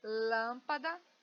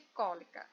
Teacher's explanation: Todas têm antepenúltima sílaba mais forte